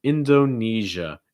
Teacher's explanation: make sure your throat's vibrating so it's not sh it's more you need to make sure your throat's vibrating right